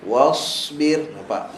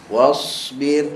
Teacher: Wasbir sebab sad ni dia ada safir, mungkin tak nampak sangat, tapi sad pun kena bagi angin dia.